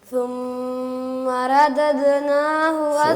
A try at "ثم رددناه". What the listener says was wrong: ثم را کو موٹا پڑھنا ہے. ثم رددناه اسفل سافلين. ردد ثم رددناه اسفل سافلين. ردد را کو پر پڑھنا ہے. را کے اوپر زبر ہو، را کے اوپر پیش ہو، را کو پر پڑھتے ہیں، موٹا پڑھتے ہیں اس کو. ردد